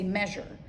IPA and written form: ˈmɛʒər (measure)